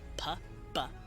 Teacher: You're using both lips to make the sound pa-ba. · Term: bilabial